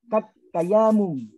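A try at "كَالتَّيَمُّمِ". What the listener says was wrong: Iya-nya jangan panjang-panjang. Meme-nya tuh banyak. Meme-nya banyak.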